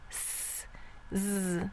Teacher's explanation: If you place your hand on your throat while you say s and z, you'll notice that one is voiced and one is unvoiced. Your voice box turns on when you say z and it's off when it says s. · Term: voiced and unvoiced pair